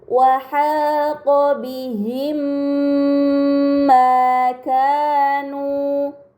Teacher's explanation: terdapat mim sukun bertemu dengan huruf mim. Ini dinamakan idgham mimi. Maka mim sukun harus dibaca secara melebur dengan gunnah yang dipanjangkan